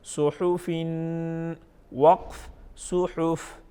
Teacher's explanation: फा को नहीं हिलाएंगे, जस्ट इसको साकिन पढ़ेंगे